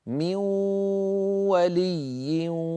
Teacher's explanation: هذه الواو معها غنه من الخيشوم هي غنه النون المدغمه من اجل هذا نسمي هذا الادغام ادغام ناقص ادغام ناقص او · ننتقل من الميم الى الواو مباشره شره ولكن هذه الواو معها غنه من الخيشوم هي غنه النون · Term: ادغام بغنه